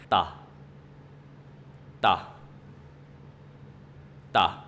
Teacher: we use the tip of our tongue touch the upper alveolar